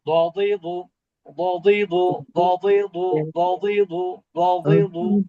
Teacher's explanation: জিহ্বার কিনারা বাম সাইড বা ডান সাইডের কিনারা এবং মাড়ির দাঁতের সাথে যুক্ত করে এই অক্ষরটা উচ্চারণ করতে হয়।